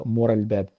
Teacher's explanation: وتختفي النون تماما من عبارة مثلا من وراء الباب التي تصير مور الباب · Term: الإدغام